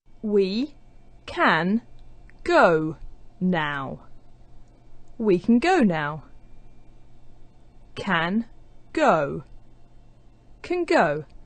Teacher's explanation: For example, we can go, where the n sound at the end of the word can is starting to resemble the g sound at the beginning of go. So actually, it sounds like the sound we have at the end of words like going and doing, the sound represented by ng. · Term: assimilated forms